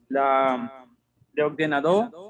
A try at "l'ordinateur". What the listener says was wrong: L'ordinateur. L'ordinateur. Avec T. T. L'ordinateur.